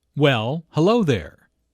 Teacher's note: notice the emphasis on hello which shows that did not expect to see julia